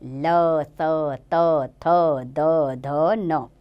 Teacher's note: दंत्य, इनको बोलते हुए दांतों को जिह्वा टच करती है